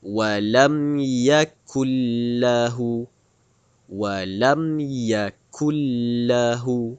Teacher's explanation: Hampir-hampir tiada bunyi nun. Terus masuk huruf lam. Bunyi masuk dalam huruf lam. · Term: idgham billaghunnah, idgham bila gunnah